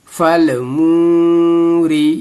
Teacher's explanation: रा को बारीक पढ़ेंगे, रा में ज़ेर है